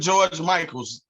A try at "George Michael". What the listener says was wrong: There's no S on the end of George Michael. Just one Michael. Michael. I know where your mess up is.